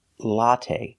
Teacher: Put the stress on the first syllable.